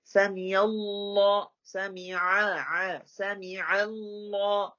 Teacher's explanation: سمی اللہ this is not the hamza, this is عین. So make a clear عین otherwise it's لاہن جلی.